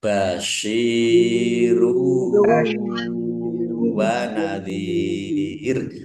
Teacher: Domah tanwin bertemu dengan huruf wau. Bacaan idgham bighunah. Masuk dengan mendengung. Yaitu mendengung wau.